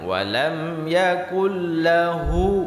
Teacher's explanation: hu di sini panjang, tapi cuma satu alif dua harakat.